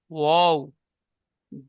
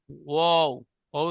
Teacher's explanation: ওয়াও, ওয়াও, মাঝখানে ফাঁকা আছে, দেখেন, ওয়াও। 2 ঠোঁট না মিলিয়ে মাঝখান হতে উচ্চারিত হয় ওয়াও, ওয়াও। ওয়াও এর মাখরাজ 2 ঠোঁট না মিলিয়ে মাঝখান থেকে উচ্চারণ হবে।